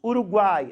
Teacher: Você tem uma vogal no meio e 2 semivogais. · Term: tritongo